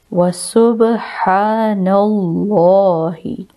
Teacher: لام سے پہلے زبر، موٹا اور پر پڑھا جائے گا